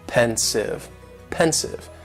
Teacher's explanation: just two syllables and the stresses on that first syllable